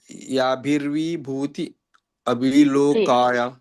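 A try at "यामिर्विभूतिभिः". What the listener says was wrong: ಯಾಭಿರ್ವಿಭೂತಿಭಿ ಒಂದ್ ಪದ, ಭಿ ಯಾಭಿರ್ವಿಭೂತಿಭಿ ಬಂದು ಅಲ್ಲಿ ನಿಲ್ಲಿಸ್ಬೇಕು. ಇಲ್ಲ, ನೀವು ಮತ್ತೆ ಅಲ್ಲಿ ಅರ್ಕಾವಳಿ ಹಚ್ಬೇಕಿಲ್ಲ, ಲೋಕಾನ್ ಅಂತ ಹೇಳಿ. ಅದು ಗಮನಿಸಿ ನೀವು ಹಿಂದಿನ ಪದ. ಯಾಭಿರ್ವಿಭೂತಿಭಿ ಲೋಕಾನ್.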